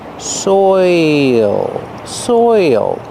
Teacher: You have the oi sound followed by the dark L. Soil. There's an extra sound there. · It's not soil, it's soil. Your mouth has to open a little bit to make the dark L, and there's an extra sound.